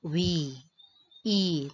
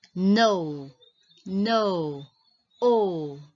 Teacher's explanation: The word contains a vowel. And the vowel is not closed by a consonant. So it's open. And you have, see, you will hear a long vowel sound.